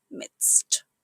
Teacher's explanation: It's pronounced midst with a quiet D and a crisp ending.